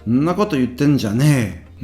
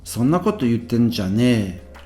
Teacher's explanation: But the first kana here, that so, basically drops off. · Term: contraction